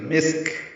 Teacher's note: سین ساکن کاف ساکن دونوں پہ ہمس ہوگا